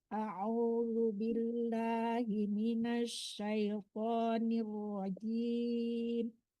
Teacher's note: Dilembutkan zalnya ya Bu, jangan dibaca zai.